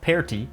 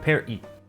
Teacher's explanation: the first vowel sound is different and the t is pronounced like a glottal stop